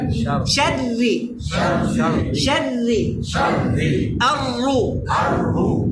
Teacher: জিব্বার অগ্রভাগ আছে না, জিব্বার আগাটা উপরে যে জায়গায় রা উচ্চারণ হয় ওখানে চাপ দিয়ে ধরে রাখবেন।